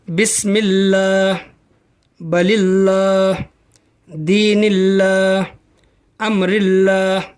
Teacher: लफ्ज़ अल्लाह से पहले ज़ेर हो तो लफ्ज़ अल्लाह के लाम को बारीक पढ़ेंगे।